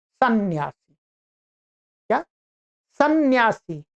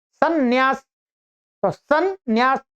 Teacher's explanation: जब हम सन्यासी या सन्यास उच्चारण कर रहे हैं तो उसमें हमें दो नकारों की ध्वनि सुनाई पड़ रही है